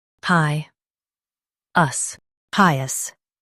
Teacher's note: Stress pi and keep us light.